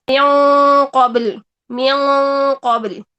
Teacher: اظہار 75% تک ہوگا، میوں قابل، میوں قابل، ٹھیک ہے، تو اس اخفاء میں 75% تک نون کا اظہار ہوتا ہے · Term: ادنیٰ اخفاء